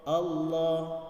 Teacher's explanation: Lafaz Allah dibaca tebal karena sebelumnya diawali oleh harkat fathah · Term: tafkhim